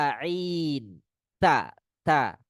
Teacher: Nah, tak sifatnya tipis istifal ya